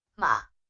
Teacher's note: the third tone has a falling and Rising tone